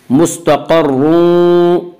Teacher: रा मुशद्दद मुतहर्रिक के ऊपर पेश है, इसलिए आप रा को पुर पढ़ेंगे।